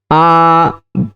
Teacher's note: बड़ा आ बोलने में जो समय लगा उसको कहते हैं दो मात्रा काल